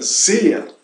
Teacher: cuidado com a S, ya que se trata de uma S muito suave, com o zumbido de uma abelha lejana